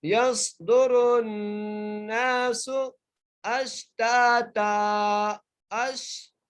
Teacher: پڑھنا ہے، سین کے اوپر پیش ہے، یصدر الناس اشتاتا، اش، حمزہ کو شین سے ملا رہے ہیں اور تا کو ایک الف کی مقدار کھینچ کے پڑھ رہے ہیں